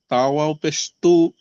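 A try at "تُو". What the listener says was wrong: পেশ, তাও পেশ কি হয়? টান হবে না? একসঙ্গে বলেন।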